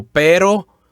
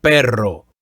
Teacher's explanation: We learned the new word, pero. It only has one R, so the roll sound is not as strong and not as long.